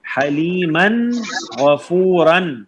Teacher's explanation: غین بھی حروف حلقی ہے تو اظہار ہوگا